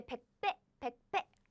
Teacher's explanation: I pronounce this pronunciation as in 배, 배 strongly because there is an air blocking sound.